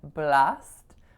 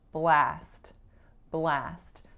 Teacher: there's more muscular tension in my a sound there's also more length